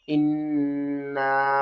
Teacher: नून मुशद्दद के ऊपर आपने गुन्ना करना है